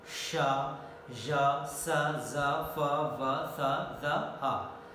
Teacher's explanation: During the production of these sounds, both the articulators, active and passive, they are coming very close to each other, and the air comes in between them, through them, with friction sounds. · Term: fricative sounds